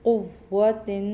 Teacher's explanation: قوف کو موٹا پڑھیں گے، حلق سے نکالیں گے، اور تا کے نیچے تنوین ہے تو وہ تنوین بھی ادا کریں گے۔